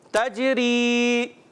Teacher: اس میں بھی جیم حرف قلقلہ سے ہے تو اس میں بھی قلقلہ کریں گے، آواز لوٹ کر آئے گی